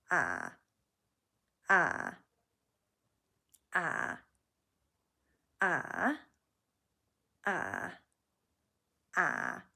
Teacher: So you're just getting the gravelly sound in the lower part of your throat.